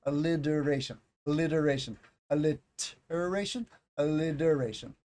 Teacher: your tongue touches a little farther back when you make the T